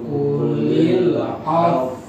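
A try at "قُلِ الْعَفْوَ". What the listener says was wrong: Ini meringi susah monyong susah nih. Qulil af. Kan tinggal monyongnya kan af monyong gitu ya. Atau kamu kayak qulil af monyong. Qulil af. Qulil af gitu ya.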